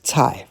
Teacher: With the grass radical on top, it's cai, fourth tone, vegetable or a dish of food.